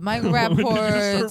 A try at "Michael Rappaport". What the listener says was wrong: Michael Rappaport's last name, Michael Rappaport. when did you make the T silent?